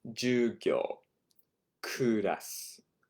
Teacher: And notice both of those words are actually falling, right, in pitch.